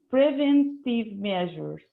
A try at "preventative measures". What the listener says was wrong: Yes, but don't read fast that you just eat parts of the word, okay? Let's read again slowly, please.